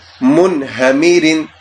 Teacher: جیسے منہمرن، اب یہ لفظ ہے میم نون من، آگے فوراً بعد ہا آ گیا تو ہم یہاں پر غنہ نہیں کریں گے